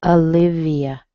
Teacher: It looks like it should be O, doesn't it? But it sounds like a schwa.